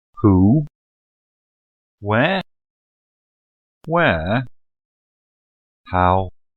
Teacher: they do not end low with the pitch at the end of the phrase either mid or high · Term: non-falling tone